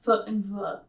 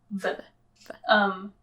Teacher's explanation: labiodental noises, like foot and v. So labio, like the lip and the teeth, v. Because it's easier for people to make those noises since our diets have changed, because our teeth don't get worn down as much by the food that we're eating, which means we have more of an overbite.